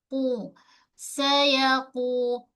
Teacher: Pangkal lidah kita sentuh pada langit lembut. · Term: qaf